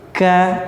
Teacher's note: kafnya dia memiliki sifat hams ya, yang artinya ada sifat basah di huruf tersebut. Jadi bukan pakai kaf biasa tapi ka ya, seperti itu.